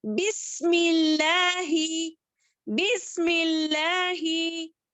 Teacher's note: मीम होठों के खुश्क हिस्से से अदा होने वाला है। लफ्जे जलाला यहाँ पर बारीक पढ़ेंगे।